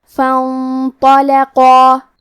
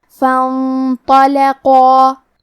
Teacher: فانطلقا تو حروف التفخیم میں سے ہے، لہذا ہمیں تو کو بھاری آواز میں پڑھنا ہے. قاف کی ادائیگی زبان کی جڑ اور تالو کے نرم حصے سے ہے.